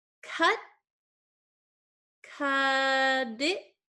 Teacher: So this T is sandwiched between two vowel sounds. So that means that generally we change this T to a flap T.